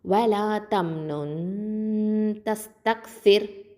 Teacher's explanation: ரா சுக்குன் பெற்றதுக்கு முன்னாடி உள்ள எழுத்து கெசரா பெற்று வந்துச்சுன்னா இந்த ராவை வந்து தற்கைக்காக தான் ஓதணும், மெல்லினமாக ஓதணும்.